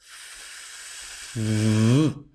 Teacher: pasado de pronunciar la F a la V, simplemente añadiendo la vibración de las cuerdas vocales